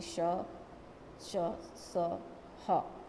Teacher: तीसरा है ऊष्म व्यंजन, इनका उच्चारण रगड़ या घर्षण से उत्पन्न वायु से होता है